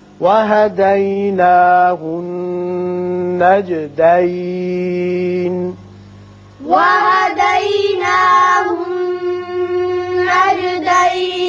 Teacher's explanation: یا نون مشدد ہے، غنہ کریں گے.